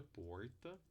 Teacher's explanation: temos aproximante retrô flexa que é o r caipira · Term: aproximante retroflexa